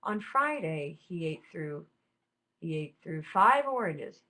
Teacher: he ate through is very very low and that's to de-emphasize it essentially the reader or the listener has already heard that phrase